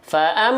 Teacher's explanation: dengung indikatornya ada dua yaitu masuk ke rongga hidung suaranya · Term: gunna